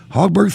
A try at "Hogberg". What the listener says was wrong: It's actually the O is long, Hogberg, and however you may feel free to call me David.